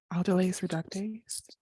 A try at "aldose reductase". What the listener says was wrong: Aldose. aldolase, that's a different enzyme. Aldose